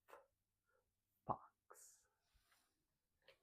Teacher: I bring in my lower lip up, kind of touch my teeth, and then I blow air out.